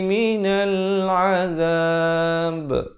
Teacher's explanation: diwaqafkan dengan diberikan pantulan kerana ba merupakan salah satu daripada 5 huruf qalqalah